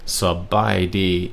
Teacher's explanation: sa being the low tone, and then bai D being flat tones